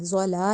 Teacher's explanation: مطلب ضاد کو زیادہ لمبا نہیں کرنا، ضاد زبر زو، اور ضاد کو زا نہیں بنانا، یعنی زلا نہیں کہنا، وہ غلط ہوگا